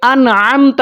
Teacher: تو آگے چلتے ہیں، صراط الذین، ذال کو بریک پڑھیں گے، انعمت، عین کی ساؤنڈ کو آپ نے کلیئر کرنا ہے۔ لفظ جو عین ہے نا، یہ آپ نے دیکھنا ہے یہ حلق کے درمیان والے حصے سے ادا ہوتا ہے